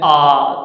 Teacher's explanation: तो ऐसा लगता है जैसे यहाँ कंठ में फंसा हुआ हो ना। तो जब आ बोलते हैं तो ये जीभ के पीछे वाले भाग से बोला जाता है